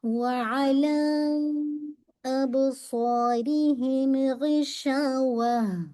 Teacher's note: اعلیٰ کو آپ نے 4 سے 5 کاؤنٹ اسٹریچ کرنا ہے